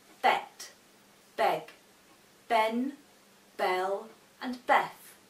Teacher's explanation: For example, the letter L makes a L sound, so your tongue should touch the top of your mouth. The B makes a B sound, which means your 2 lips touch. We have to make sure that we say all of our final consonants, as this helps our listeners to understand what we are saying.